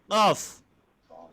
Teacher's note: Jadi cara menyebutkan qaf pangkal lidah naik ke atas. Qaf. Pangkal lidah naik ke atas sedikit.